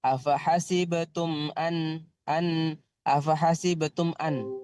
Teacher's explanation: Tumnya harus dibaca jelas tanpa didengungkan.